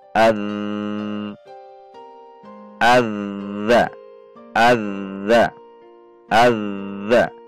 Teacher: Karena dia punya sifat ar-rohwah, suara tidak tertahan. Namun demikian, dia al-jahru.